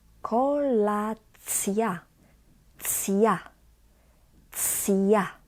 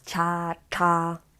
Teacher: So this is not cha, cha, no, it's cja, cja. So we actually pronounce the t, but it quickly gets softened, and we've got ja.